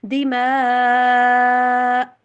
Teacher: آواز بلاک ہو جانی چاہیے، حلق سے ہوا نکلنی بند ہو جائے کمپلیٹلی، دِمَاء، جس طرح سے آ پڑھتے ہوئے ای او، اس طرح سے آواز کٹ ہوتی نا، اس طرح سے۔ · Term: کٹ والی ساؤنڈ